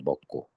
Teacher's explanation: 먹에다가 고를 하면 기역 받침 때문에 무조건 된소리 대기가 일어납니다. 먹고. 그러니 굳이 꼬라고 적을 필요가 없어요.